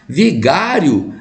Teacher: Vigário é uma paroxítona, tem a penúltima sílaba tônica, forte, terminada em ditongo crescente